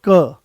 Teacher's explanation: कोई ज्यादा जोर नहीं लगाना पड़ा आराम से वो आ गया है कम कम प्राणवायु की आवश्यकता पड़ी। आराम से आपने उसको बोल दिया। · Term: अल्पप्राण